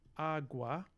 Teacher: But there's another potential route that I found in my research for this, which is that it's possible that instead of turning into a palatal glide like Iwa, we had agua, which, so we had voicing, this sort of regular lenition that we see of the voiceless velar stop is going to voice to agua, and then we are going to have this a, which is now in an open syllable, so no consonant after it in the same syllable.